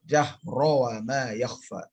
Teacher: Tidak ada dengung dan tidak ada idgham diguna di situ.